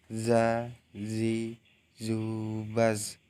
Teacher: Baik, selanjutnya yang kesembilan, melafalkan huruf Za dengan menyentuhkan ujung lidah dengan dinding 2 gigi seri bagian atas. Suara mengalir dengan lembut tanpa diiringi mengalirnya udara.